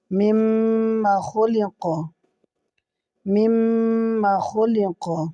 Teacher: এখানে হরকতের বামে মিমে তাসদিদ ওয়াজিব গুন্না এক আলিফ গুন্না করতে হবে